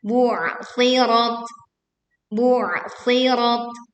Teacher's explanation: kita menekan ain sukun dengan menyempitkan suaranya sehingga suara terdengar lebih berat.